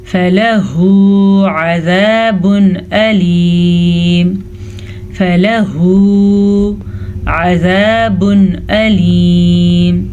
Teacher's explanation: تنوین کے بعد حمزہ آ گیا ہے جو کہ حروف حلقی میں سے ہے, تو ہم تنوین کو ظاہر کر کے بغیر غننے کے پڑھیں گے